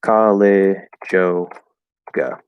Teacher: But especially in fast speech, most likely, we're just going to ignore that Y and connect J to O, college yoga